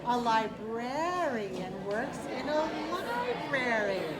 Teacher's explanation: we say library with a stress on the first syllable, but we say librarian with a stress on the second syllable